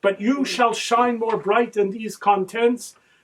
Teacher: pick up the long I of rhyme in the words shine and bright, adding the sharp T sound in bright and contents